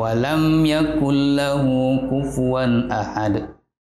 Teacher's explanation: bacaannya izhar syafawi dan harus dibaca jelas tanpa didengungkan bilas bibir merapatkan bibir tanpa didengungkan